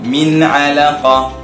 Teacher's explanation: nun mati bertemu dengan ain izhar halqi, jelas.